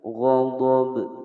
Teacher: Huruf ba di sini dipantulkan karena dia adalah salah satu huruf qalqalah ya. Qalqalahnya adalah qalqalah kubra karena huruf qalqalah yang berada di akhir kalimat.